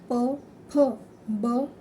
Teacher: म्हणजे ओठांना स्पर्श होतो त्यानंतर त्याला ओष्ठ असे म्हणतात